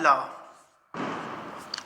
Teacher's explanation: ल के उच्चारण में जीभ वायु के मार्ग को रोकने की कोशिश करती है, लेकिन वायु जीभ के पीछे से या साइड से निकल जाती है। इसीलिए ला को पार्श्विक व्यंजन कहा जाता है।